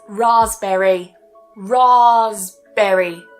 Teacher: So we don't pronounce the P, remember it's silent.